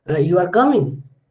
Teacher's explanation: So it's a rising intonation, and though I am using a declarative sentence, you are coming, but the meaning is, are you coming?